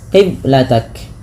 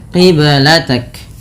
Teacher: Qiblatak ada bacaan qalqalah pada lafal huruf ba yang disukunkan. Ba sukun merupakan salah satu bacaan qalqalah yang dimana harus memantul.